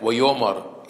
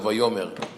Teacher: when they have a segol at the end of the word, they turn it into like Vayomar instead of Vayomer.